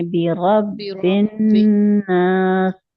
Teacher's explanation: बिरब्बि रा को मोटा पढ़ेंगे